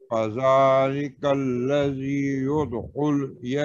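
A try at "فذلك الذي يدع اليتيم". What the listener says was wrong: نہیں یا کے اوپر تو زبر ہے.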